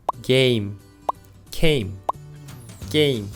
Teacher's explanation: you can feel your mouth is in the same shape when pronouncing each word the only difference is that the initial consonant sound gets tougher